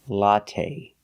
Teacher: let's talk about latte we say latte we don't say latte the last syllable is the long a it's not stressed but we use the long a like say and pay latte make a long sound not the short latte but the